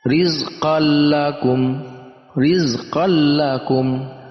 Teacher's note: Bila hunnah itu artinya tanpa dengung. Jadi kita hanya memasukkan tanwin ke huruf lam, yaitu dengan tasydid dan tanpa dengung. Cukup memasukkan saja.